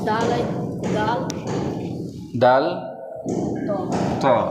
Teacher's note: থেকে উচ্চারিত হবে এই তা এর যে মাখরাজ সেই মাখরাজ থেকেই তা এর মাখরাজ জিভের আগা সামনের উপরের দাঁতের গোড়া